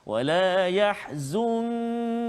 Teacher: Nun mati bertemu dengan kaf, maka ikhfa hakiki sebagaimana yang kita telah belajar sebelum ini, mestilah kita kena baca dengan dengung, bacaan kita dengung dengan kadar 2 harakat